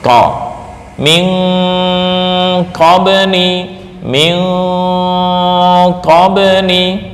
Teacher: Huruf qof ini lidah pangkal paling ujung dekat dengan anak tekak sebelum masuk ke tenggorokan.